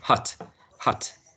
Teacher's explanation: it's shorter than the spanish ah but i guess it's closest to what we have in spanish